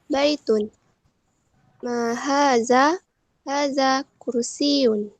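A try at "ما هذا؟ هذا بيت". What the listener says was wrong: Baik, mumtaz. Nanti mumtaz ya. Syukran.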